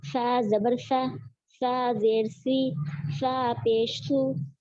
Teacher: اس کے اندر ڈفرینٹ کیا ہے، ڈفرینس یہ ہے کہ یہاں پر سا دونوں دانتوں کے بیچ میں زبان رکھ کے ادا کریں گے